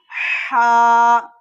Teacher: हा जो अदा होता है वह बीच वाले हल्क से अदा होते हैं